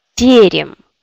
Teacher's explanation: Il y a d'autres yé, deuxième, yé, mais comme elle n'est pas accentuée, on le prononce comme i.